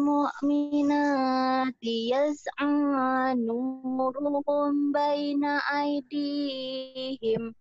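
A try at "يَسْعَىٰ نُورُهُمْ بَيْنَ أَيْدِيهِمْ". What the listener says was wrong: Kayak orang Jawa baca Quran ya lagunya. Karena lagunya ya lagu Quran jangan lagu Jawa, ingat. Enggak boleh. Lagu Sunda juga enggak boleh.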